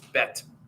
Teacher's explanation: The Hebrews don't have th. So when you say Bethlehem, they would not say th. It's bet. So it's a hard T.